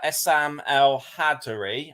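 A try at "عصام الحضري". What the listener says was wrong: I believe it's El Hadori.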